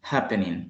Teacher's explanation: Al inicio está el acento